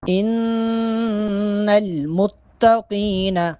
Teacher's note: ان نون پہ غنہ کریں گے، متقین قوف موٹا پڑھیں گے